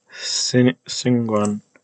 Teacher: it's just a consonant W after a G after an N, but this N is actually most likely a velar N, like in the word sing, which is related to Singguan.